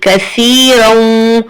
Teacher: تو یہاں پر آپ کو تھوڑی سی زبان شو کرنی ہے، باہر سامنے والے 2 دانت جو کہ ثنایا الیاء کہلاتے ہیں، وہاں تھوڑی سی زبان ٹچ ہوگی، تھوڑی سی زبان شو ہوگی تو سا ایزیلی ادا ہو جائے گا۔